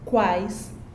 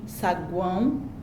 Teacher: quais são oral e saguão é um som nasal